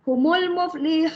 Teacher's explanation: So di situ hu, saya panjangkan hu ya. Saya tak peduli nun tu. Saya tak masukkan nun langsung. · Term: mad arid disukun